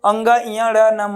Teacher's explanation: ये जो पंचमाक्षर हैं अपने अपने उच्चारण स्थानों के साथ साथ नासिका से भी उच्चरित होते हैं, इसीलिए इनको क्या कहा जाता है, अनुनासिक वर्ण कहा जाता है।